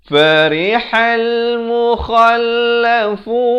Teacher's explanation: Ha ini makhrajnya di pertengahan kerongkong.